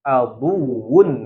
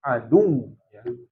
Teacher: Kalau dia bertasydid bunyinya aduun, kalau mau berhenti adu ya. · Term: waw bertasydid